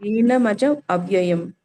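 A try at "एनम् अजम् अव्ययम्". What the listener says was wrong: ಏನಮಜಂ ಅವ್ಯಯಂ ಅಂತ ಬಿಡಿಸ್ಬೇಕು. ಹಚ್ಬೇಕು ಅಲ್ಲಿ. ಏನಮಜ ಅಲ್ಲ ಮಾತಾಜಿ, ಆಗಲೇನು ಕೂಡ ಹಾಗೆ ಹೇಳ್ದೆ. ಏನ ಅಂತ ಮಾಡ್ಬಿಟ್ರೆ ಅದ್ ಬೇರೆ ಆಗತ್ತೆ ಅರ್ಥ. ಏನಂ ಅಂತ ಹೇಳಿ. ಏನಂ ಅಜಂ ಅವ್ಯಯಂ.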